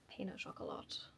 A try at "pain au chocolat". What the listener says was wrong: You don't pronounce the T.